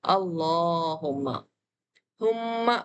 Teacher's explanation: میم تشدید ہمیشہ غنہ ہوتا ہے، تو یہاں بھی میم تشدید کو ہمیشہ غنہ کیا جائے گا۔